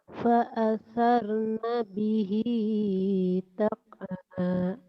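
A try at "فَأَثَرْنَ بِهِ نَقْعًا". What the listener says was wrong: Titiknya satu. Bukan tak.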